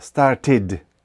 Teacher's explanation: іди кінцева вимовляється коротко але дзвінко